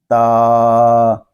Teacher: تا جو ہے یہ زبان کی نوک اور اوپر کے دانتوں کی جڑ سے ادا ہوتا ہے، اس کو تا یعنی حمزہ ساکنہ کی آواز بھی پیدا نہ ہو اور ہا ساکن کی بھی، یعنی تا اس طرح نہیں پڑھیں گے، بلکہ اس کی آواز کو ہوا میں ختم کریں گے۔